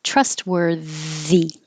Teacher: I made this capital TH to show that it's a voiced TH because there's no way of showing that.